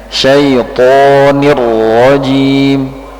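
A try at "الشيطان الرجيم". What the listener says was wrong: huruf ha disempurnakan lagi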